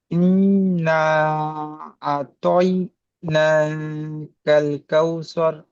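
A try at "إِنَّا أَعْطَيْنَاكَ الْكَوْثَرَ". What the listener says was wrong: এটা কাল কাউসর বলেছেন, এটা সার বলবেন, সা। আ তই না, এইটাই বেশিরভাগ ভাইজানের হচ্ছে না। এই আইনটা গলার মাঝখান থেকে উচ্চারিত হয়, হ্যাঁ, আইন, বুঝতে পেরেছেন? আতাইনা কাল কাউসার, আর আপনি সর বলেছেন, সার বলবেন, বুঝতে পেরেছেন?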